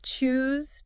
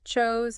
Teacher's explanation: Choose has a long oo sound, like in moon. Chose has a long o sound, like in boat.